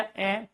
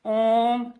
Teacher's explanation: तो अपने आप में सबसे पवित्र स्वर कहलाता है ओम त्र मात्रिक है। क्योंकि जितना समय अ को उच्चारण करने में लगता है उसका प्यारे दोस्तों तीन गुना समय लगता है आपका ओम को उच्चारण करने में। जैसे हमने इसका उच्चारण किया अ तो हमने एक सेकंड लगाई।